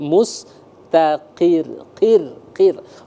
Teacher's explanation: huruf sebelumnya berharakat kasrah maka dia tipis lembut sekali mustaqir qir qir ro RI tipis ya jadi ketika dia Sukun